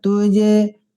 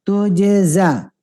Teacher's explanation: jim dulu baru zai ya, pantulkan dengan sempurna jimnya